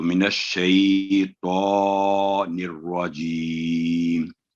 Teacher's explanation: تو شین پر سٹریس ہوگا، اس پر تشدید ہے، تو آگے پھر حروف لین کی ادائیگی کر کے تو، یہ ہے اس کا صحیح تلفظ.